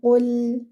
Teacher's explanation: The qaf is heavy and the lam is light. Join your qaf with the lam. Qul, do not bounce your lam.